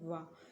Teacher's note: जब आप वाह बोलेंगे तो आपका दांत और ओठ दोनों ही आपस में टकराएंगे। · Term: दंत ओष्ठ